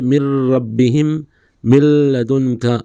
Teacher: یہ ادغام لام اور را کی صورت میں بغیر غنہ ہوگا